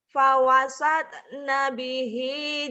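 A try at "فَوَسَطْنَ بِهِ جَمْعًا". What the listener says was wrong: kurang bulat. Fawasata. Fawasata. Fawasata nabihi jam'a. Coba lagi.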